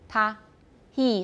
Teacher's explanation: h is not really a fricative we don't have friction we have aspiration and it's only glottal if you're just breathing and doing nothing